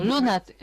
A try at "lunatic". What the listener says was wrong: I would say the schwa's not quite schwary enough for me. And we do say luna, as in Luna, not Luna. Okay, Luna, the goddess, the goddess for the moon. Yeah, Luna.